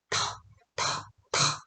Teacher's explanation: 첫 번째 음에서 강한 압력을 사용해서 내뿜어준다.